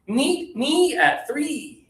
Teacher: High tongue with that double vowel e.